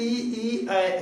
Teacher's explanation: अग्र स्वर जिसमें जीभ का अगला भाग काम करे